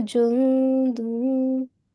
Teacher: the ikhfa rule is you have to make a concealed nasal sound. Okay, ikhfa means concealment.